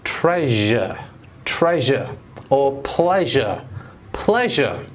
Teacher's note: pronounce the last sound again sh and at the same time I want you to vibrate your voice